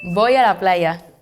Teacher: Spanish starts with a V, but it sounded so much like a B.